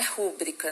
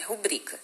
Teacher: Rubrica é uma paroxítona também, tá? Não é rúbrica, não é uma proparoxítona